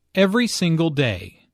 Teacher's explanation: Notice that each word here is stressed. The speaker wants to make a point.